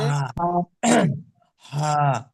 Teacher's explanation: এই হাটা হচ্ছে কণ্ঠনলীর ভিতর দিয়ে উচ্চারিত করতে হয় কোথাতে ভাই কণ্ঠনলীর ভিতর দিয়ে একদম ভিতর থেকে ها এই যে